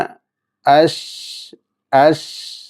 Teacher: നാവിൻ്റെ മധ്യവും നേരെ മേൽ അണ്ണാക്കുമാണ് ഷീനിൻ്റെ മഹ്റജ്. അപ്പോൾ പലരും ഉച്ചരിക്കുമ്പോൾ നാവിൻ്റെ അഗ്രഭാഗം കൊണ്ട് ഷ ഷി എന്ന് പറയാറുണ്ട്. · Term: ഷീൻ